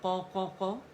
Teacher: موٹائی سے قا قا قا, سیکنڈ درجے کی تفخیم ہے